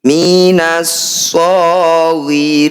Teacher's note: Mad tabi'i bertemu huruf hidup dan dibaca berhenti, jadilah bacaan mad arif disukun. Ri kita panjangkan 6 harokat, huruf terakhir kita sukun.